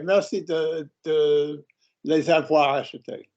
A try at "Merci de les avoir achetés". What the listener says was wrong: That's it. I didn't hear the lay. Go again.